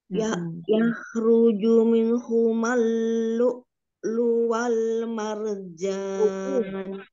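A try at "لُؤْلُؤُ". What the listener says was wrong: Lu'u, ada hamzahnya. Ya, jadi U ya, karena ada hamzah di atas.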